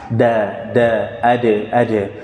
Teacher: Kalau dal bisa langsung kita sempurna menempel.